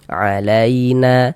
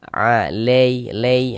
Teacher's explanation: harus berhati-hati ketika membaca huruf lin yang terjadi pada huruf ya sukun. Jangan sampai condong ke huruf e.